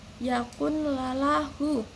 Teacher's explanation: Dan yang kedua ada idom bilahuna. Idom bilahuna meleburkan nun sukun atau tanwin ke dalam huruf lam ro tanpa adanya dengungan.